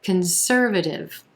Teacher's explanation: we've got four syllables here with our emphasis on the second syllable and the er as in purple sound conservative that first syllable that c-o-n is going to be a